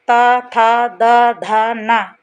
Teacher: ध का उच्चारण स्थान दंत